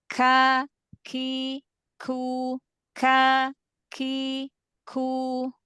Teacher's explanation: Kalau kaf dia kan pangkal lidah bagian bawah.